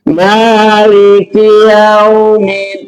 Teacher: kalau tidak diwakafkan, maka cukup dibaca lembut saja, dibaca layin saja, ya, tetapi tidak dibaca mad, tidak ada mad, tidak ada panjang. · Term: madlayin